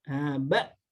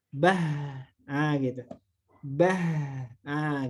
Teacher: Cuma beda karakternya. Kalau huruf hamzah ini dimatikan langsung ba, langsung dimatikan, ditempelkan langsung, pita suaranya langsung nutup gitu ya. Kalau huruf ha ini dialirkan, tapi mahrujnya letaknya sama di sana, di huruf hamzah, bah, gitu, bah, gitu ya.